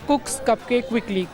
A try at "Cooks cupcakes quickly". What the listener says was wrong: कुक्स, कपकेक्स, लेकिन ज़रा faster.